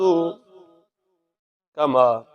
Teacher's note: ما 2-3 الف کے برابر لمبا کریں گے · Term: مد